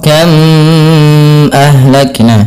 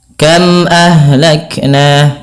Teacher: bibir kita sehingga kita dinakan dengan izhar syafawi yang dalam membacanya harus diperjelas suara mnya dan tidak boleh ada penahanan